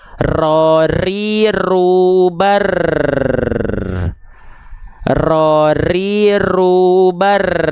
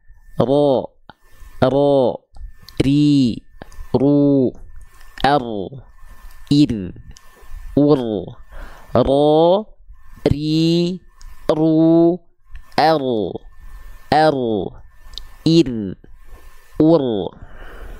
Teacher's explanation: Lafalkan huruf ro dengan getaran yang tidak berlebihan. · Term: takrir